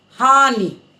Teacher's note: थोड़े झटके से बोलते हैं हानि, नी पे जाके रुक जाती है आवाज। हानि कहेंगे तो वो खींचेगी, और खींचने से वो बड़ी की मात्रा का भाव देगी। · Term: छोटी की मात्रा